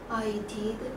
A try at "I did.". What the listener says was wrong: 끝이 올려라니까. 아이가 아니잖아. 이 줄여서 말을 해야 돼.